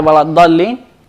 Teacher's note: di dalam kata waladdallin dia adalah mad lazim. Ya, harus dipanjangkan 6 harokat.